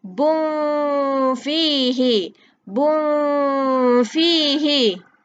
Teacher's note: Dalam hal kitabun fihi, di dalamnya, bun fihi, kita kena dengungkan dia dua harakat. Okey, dengungkan 2 harakat dan juga bun tu dibunyikan tidak jelas.